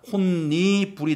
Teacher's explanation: 역행 동화에 따라서 뒤에 오는 니은 때문에 디귿이 니은으로 바뀌게 되는 비음화 현상